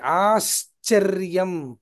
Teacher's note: ఆశ్చర్యం అన్నప్పుడు ఆకారం తర్వాత తాలవ్య శకారము తర్వాత చకారము